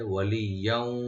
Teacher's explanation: ওয়ালিয়াও ওয়ালা নাসিরা, ওয়ালিয়াও ওয়া ওপেন রাখবেন, আর এখানে ইয়ার উপর যে তানবিন আছে এখানে আমরা ওয়ার সাথে নেক্সট শব্দের ওয়ার সাথে মিলে এদগাম উইথ গুন্না হবে